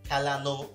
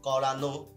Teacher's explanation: এরকম যখন অনেক জায়গায় কিন্তু আনো প্রত্যয় যুক্ত হয়, এই আনো প্রত্যয় থাকলে কিন্তু সেগুলো অটা ওকার উচ্চারিত হয়